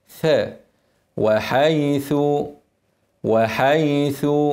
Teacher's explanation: زي الذال بس يخرج هواء